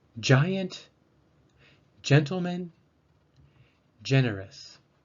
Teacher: the soft g sounds like a j sound before the vowels e and i